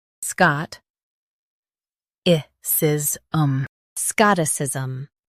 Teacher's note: Emphasize Scott and soften i-s.